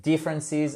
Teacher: Differences, accent tonique sur la première syllabe.